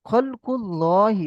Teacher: আল্লাহ লাম মুসাদ্দাদের পূর্বে পেশ এসেছে, তাই আল্লাহ লামকে পুর অর্থাৎ ল করে পড়তে হবে